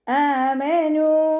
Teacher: ഹംസ അക്സൽ ഹൽക്കിൽ നിന്നാണ് വരുന്നത്, സൗണ്ടിനെ വ്യക്തമാക്കി കൊടുക്കുക